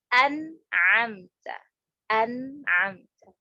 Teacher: Hamzah sama nun ini makhraj secara umumnya aja sudah beda, hamzah di tenggorokan sedangkan nun di lidah. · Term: mutabaidan